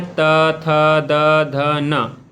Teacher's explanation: दंत्य व्यंजन किसको बोला जाता है, इसमें जो है जीभ जो है दांत को स्पर्श करती है जिससे ध्वनि उत्पन्न होती है